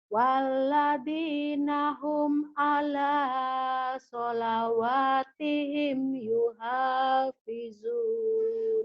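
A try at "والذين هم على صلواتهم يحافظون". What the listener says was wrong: Udah bagus, cuman ainnya aja yang belum keluar. Ala ya. Walladzina hum ala. Ainnya yang keluarin. Ala salawatihim yuhafizun.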